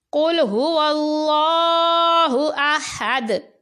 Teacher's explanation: قل میں قاف کو پر پڑھا جائے گا